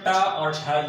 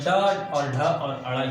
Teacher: ट और ठ ये हमारे अघोष वर्ण होंगे, और ड और ढ और अड़ ये तीनों हमारे सघोष वर्ण हो जाएंगे